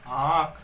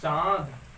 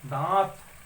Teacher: ध्वनि जो होती है मुख के साथ साथ वह नाक से भी निकल रही है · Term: अनुनासिक